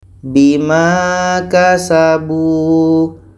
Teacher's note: Kasabu panjang 2 harokat karena menjadi mad asli waw. Waw mati sebelumnya ada huruf yang berbaris di depan.